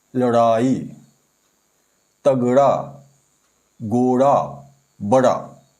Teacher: इनका उच्चारण करते समय हमारी जीभ की नोक उलटकर झटके के साथ तालु को छूती हुई नीचे आती है। ऐसा लगता है जैसे इन व्यंजनों को बाहर की ओर फेंका गया हो। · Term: उत्क्षिप्त व्यंजन